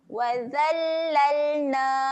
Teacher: lam ketika mati sifatnya adalah tahan angin. Jangan lantunkan.